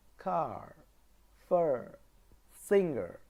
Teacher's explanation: when the letter R comes at the end of a word it's R is not pronounced in British English